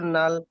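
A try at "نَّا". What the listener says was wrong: লামটা কিন্তু লামটা 3 আলিফ টান হবে। হ্যাঁ, হ্যাঁ।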